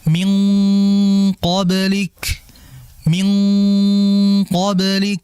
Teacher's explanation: Seperti contohnya qof. Qof itu kesamarannya sedikit makanya dibaca min qoblik. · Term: ikhfa